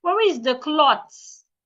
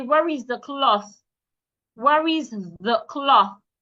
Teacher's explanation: It is not clots. The TH should not be pronounced like a T. Put your tongue outside and say, where is the cloth?